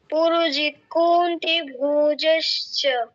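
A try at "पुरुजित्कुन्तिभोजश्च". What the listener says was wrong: তুমি আবার কুতে দীর্ঘ কেন করছো? হয় ওকারে, ওকারে দীর্ঘ।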